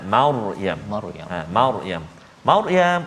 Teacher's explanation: bila kita baca tu ra yang sukun sebelum dia berada atas, jadi dia bunyi tebal sikit